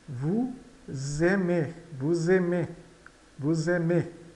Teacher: E o AI com o A de aimes. Esse S, ele vai ficar com som de Z porque está entre vogais.